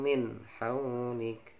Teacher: nun sukun ketemu ha itu dibaca ishar, harus jelas